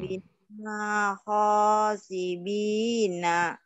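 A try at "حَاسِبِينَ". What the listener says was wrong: Wakafa bina. Ha. Jangan ho. Itu kan nggak ada titiknya. Hasibina. Ketuker. Wakafa bina hasibina. Wakafa bina hasibin.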